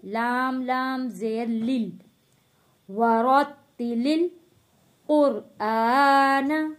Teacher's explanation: یہاں پہ دیکھیں جو الف ہے بالکل خالی ہے، اس لیے یہ الف نہیں پڑھا جائے گا۔ ہم نے لام کو لام جزم والے کے ساتھ جوڑ کر پڑھنا ہے